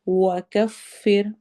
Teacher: ذنوبنا، ذال کو نرمی سے پڑھنا ہے، واو پہ واو مدہ ہوگی، بنا میں الف مدہ ہو رہی ہے، وکفر، واو میں ہون گول ہوں گے، کفر میں روا باریک ہوگا